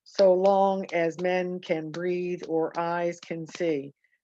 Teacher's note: soft loud soft loud or dum dum dum dum